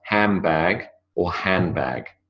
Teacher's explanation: It is the b that has the power over the d. The d disappears and the b dominates. The b survives. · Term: assimilation